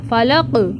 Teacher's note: اب فلق میں قاف موٹا ہوگا اور قاف میں قلقلہ بھی ہوگا